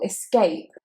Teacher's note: Now the thing with escape is that it's actually an I sound at the beginning and not an E. We don't say escape, we say escape, escape. · the stress is on the second syllable, escape. The criminal escaped.